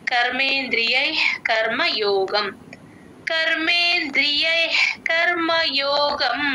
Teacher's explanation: half విసర్గ హెచ్ లాగా వస్తుంది